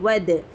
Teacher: دال پر جزم ہے تو قلقلہ ہوگا